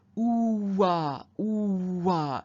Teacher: you can hear how a w sound has appeared in there